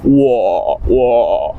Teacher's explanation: the sound you want to make, it's kind of like a little creaky in your throat. It's like a frog is in your throat, maybe you could say. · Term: third tone